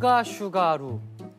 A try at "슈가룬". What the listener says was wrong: 루 마지막 거 발음 정확히.